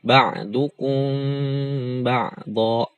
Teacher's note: Nah, ini mimnya enggak dijelaskan tapi disamarkan.